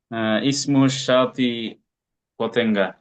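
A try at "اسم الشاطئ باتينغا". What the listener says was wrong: কোন পে আরবিতে নাই পেতে বা আসবে বাতেঙ্গা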